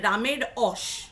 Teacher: এটা একটা উত্তরবঙ্গের যে উপভাষা রয়েছে তার একটা বিশেষত্ব, যে যেখানে র বলার কথা নয় সেখানে র বলবো, আর যেখানে র বলার কথা সেখানে আমি অ বলবো। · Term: আদি ব্যঞ্জনধ্বনির লোপ